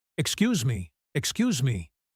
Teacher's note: If he had said it softly once, it would be a request. But saying it twice, loudly, with a sharp pause in between, that is a complaint